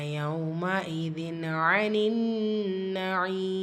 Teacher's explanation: ஸோ இந்த இடத்துல ஹம்சாவுடைய உச்சரிப்பு சரிவர நீங்கள் உச்சரிக்கணும். தன்வீனுக்கு அப்புறமா ஐன் இருக்குது. ஸோ இது ஹாருடைய சட்டம். உள்ளதை உள்ள மாதிரி ஓதணும், குன்னா செய்யக்கூடாது.